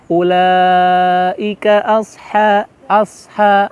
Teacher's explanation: hukumnya mad wajib muttasil jadi mau tidak mau kita harus memanjangkan bacaannya menjadi enam harokat